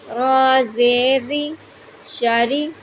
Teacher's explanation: شین کو ہم نے زبان کے درمیان اور تالو کے درمیان سے ادا کرنا ہے، را کو ہم نے باریک پڑھنا ہے، را کے نیچے زیر ہے تو اس کو ہم باریک پڑھیں گے